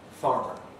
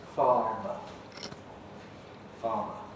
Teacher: when r was before a consonant or at the end of a word before a pause it disappeared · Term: r dropping, R dropping